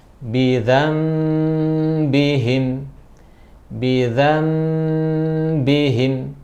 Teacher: Jadi iklab itu adalah nun sakinah, nun mati atau tanwin berhadapan dengan huruf ba, maka dibaca ditukar menjadi mim, nunnya iklab. Ya, kemudian dengan diikhfakan. Ya, dibaca ikhfa, yakni dibaca dengan gunnah. · Jadi si nun ini diganti ke huruf mim